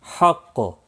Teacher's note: وقف کی صورت میں قاف ساکن پڑھا جائے گا، مشدد بھی ہے، تھوڑا سختی کے ساتھ، اور کلکلہ بھی ہوگا